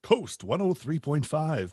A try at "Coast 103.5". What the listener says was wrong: you're not saying it soft enough. Where's your Coast 103?